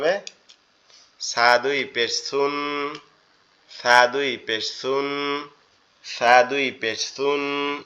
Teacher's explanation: সাটা হচ্ছে আমাদের জিহ্বার আগা সামনের দুই দাঁতের আগার সঙ্গে লাগবে, লেগে উচ্চারিত হবে।